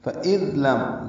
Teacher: ذال نرمی سے ادا ہوگا، میم ساکن پہ اظہار ہے، اظہار شفوی